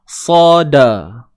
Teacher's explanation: Huruf qaf tebal selamanya. Sad tebal selamanya. Dal tak tebal. Dia nipis selamanya. Sada. Jangan sodoku.